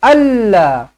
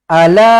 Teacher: la baca dengan empat ataupun lima harakat Mad Jaiz munfasil